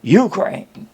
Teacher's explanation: accents the first syllable so she says Ukraine